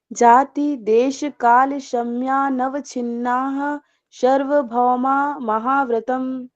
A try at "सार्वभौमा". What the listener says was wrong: सर्व नहीं है, सार्व है।